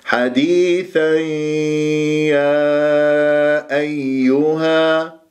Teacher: هذا الإدغام بغنة مع الياء